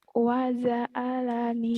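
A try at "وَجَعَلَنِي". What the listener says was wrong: Jimnya keras. Jakarta keras. Waja'alani.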